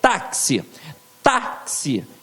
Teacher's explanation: viu onde é que ficou a sílaba forte? Na penúltima.